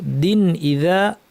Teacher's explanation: তানউইনের পর হামজা, সে কারণে আমরা গুন্নাকে বাড়াবো না, স্বাভাবিক রাখবো।